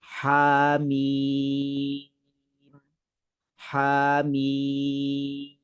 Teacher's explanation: hamim, ha 2 harakat, mim 6 harakat.